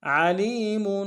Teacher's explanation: عین کو گہرائی سے ادا کریں گے، لام کو یا کے سامنے لانا ہے، یا مدہ ایک الف نار میں کھینچیں گے، میم کے اوپر تنوین ہے، غنہ کریں گے، علیم بہ علیم فإن اللہ بہ علیم۔